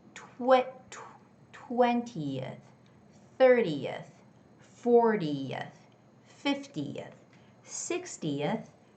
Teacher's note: there's no stress on that e, right? So, we don't make a clear sound, but we rather say yuh yuh. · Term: schwa